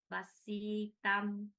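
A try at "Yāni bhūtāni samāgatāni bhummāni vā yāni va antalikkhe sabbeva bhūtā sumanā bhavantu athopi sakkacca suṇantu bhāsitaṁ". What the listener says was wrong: Bhasitang. Yes, you still miss a few long vowels. It's okay, but you practice.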